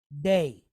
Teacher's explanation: Then we have the dalet, and it's pointed sere yod. So like EH with an I on the end of it, right?